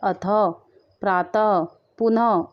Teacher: इनका उच्चारण ह की तरह होता है। जैसे हमारे जो विसर्ग हमारे पीछे लगे हैं तो इनको ह की तरह उच्चारण होता है इनका